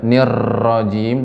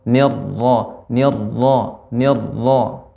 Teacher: berharakat fathah dia tebal kemudian getarannya sedikit ya tidak banyak